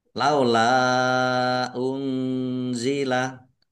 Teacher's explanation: karena bertemu dengan huruf alif di kata yang berbeda maka menjadi mat jaiz munfasil dibaca panjang boleh 5 boleh 2 harokat. Nun sukun bertemu dengan huruf za, bacaan ikhfa, dibaca samar-samar.